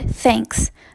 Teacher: we have the english inventory here is the theta or sound it is a voiceless dental fricative